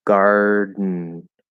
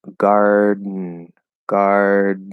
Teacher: if you go from gar into the d position you don't push the d out and you just um make it an n · i'm going into the d and then before i just do a straight n the back of my tongue kind of comes up and closes